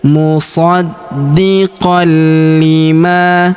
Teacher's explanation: tanwin an huruf qan bertemu huruf li berharokat tasydid, maka tanwin annya menghilang melebur ke huruf li yang berharokat tasydid.